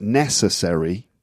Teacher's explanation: when you get a word like necessary the stress is on the first syllable